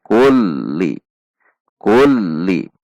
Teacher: Suaranya adalah tinggi kemudian merendah seperti hendak berhenti kemudian naik kembali. · Karena lam memiliki sifat tawasud sehingga seolah-olah akan berhenti turun tekanannya kemudian naik kembali. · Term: lam tasydid